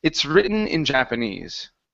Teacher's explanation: that s needs to sort of jump out if not then all I hear is it written